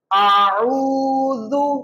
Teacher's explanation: زال کو نرمی کے ساتھ پڑھنا ہے، ہلکی سی زبان باہر نکال کے